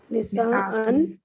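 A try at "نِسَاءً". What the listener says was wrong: अच्छा आपको पता है यहाँ निसाअन के ऊपर नून ज़बर के बाद अलिफ नहीं आएगा। और निसाइन।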